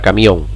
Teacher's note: ¿Lleva el golpe sobre la vocal abierta? Sí, sobre la O.